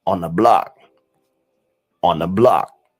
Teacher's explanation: So the th becomes n. It creates the n sound.